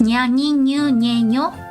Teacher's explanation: It's the middle part, like the palate part of your tongue that touches the top of the mouth.